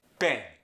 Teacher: Pen and pan both sound like pen.